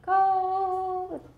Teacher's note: My vocal folds are vibrating faster to produce a higher pitch.